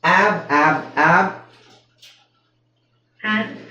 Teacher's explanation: ನೀವು ಹೇಳ್ತಾ ಇರೋದು ಹಕಾರ ಬರ್ತಾ ಇದೆ ಹ ಬರಬಾರದು